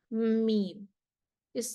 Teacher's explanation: میم بند ہونٹوں کے خشک حصے سے، میم، یہ ضعیف لیٹر ہے، اس میں جہر، توسط، استفال، انفتاح، اطلاق اور غنہ ہے۔